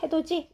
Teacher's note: 디귿과 이가 만나면 지읒이 되는 거예요.